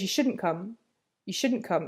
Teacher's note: that negative auxilary is hard to catch because I don't pronounce the T sound at the end